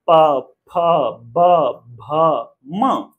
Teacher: इस प्रकार दोनों ओष्ठ स्पर्श हो रहे हैं आपस में, तब जाके ये क्लियरली साउंड प्रोड्यूस हो पा रहा है, उच्चारण हो पा रही है। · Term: प वर्ग